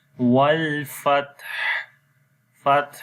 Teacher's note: on the Ta you will make Hams quality like the continuation of breath